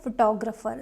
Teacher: photographer second syllable is stressed